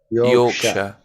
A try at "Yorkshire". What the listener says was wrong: Yeah.